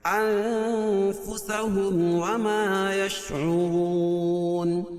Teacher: نون ساکن کے بعد حروف اخفا کی 15 حرفوں میں سے فا ہے، تو یہاں ناک میں آواز کو چھپا کر پڑھیں گے۔ انفسهم وما يشعرون، اور میم ساکن کے بعد میم اور با کے علاوہ کوئی اور حرف آئے تو اظہار شفوی۔ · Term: اخفا حقیقی